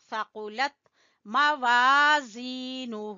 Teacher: تا کے اوپر قلقلہ نہیں کرنا